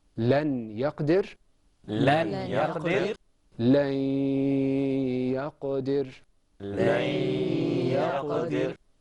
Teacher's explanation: Notice that there was a humming sound, or there was a longing of your voice. That's with ghunna.